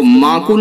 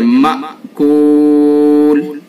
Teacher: یہ حمزہ ہے، اس کو جھٹکے کے ساتھ پڑھیں گے